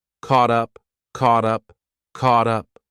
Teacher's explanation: we have a t between two vowels again so I'll pronounce it as a soft D